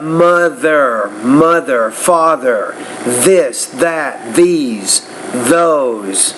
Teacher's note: So that TH sound, that's an interdental consonant. You want to work on producing that sound by putting your tongue between your teeth.